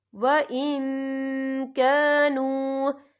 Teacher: اور آگے دیکھیں کانو، یہاں پہ واو مدہ بھی ہو رہا ہے، واو ساکن ہے، واو ساکن سے پہلے پیش ہے اور اس میں چھوٹی سی مد بھی ہے تو ہم یہاں 3 یا 4 حرکت کے برابر کھینچ کے پڑھیں گے